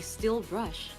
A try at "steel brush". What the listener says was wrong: Oh, steel. I think you said still. I was like, what is still?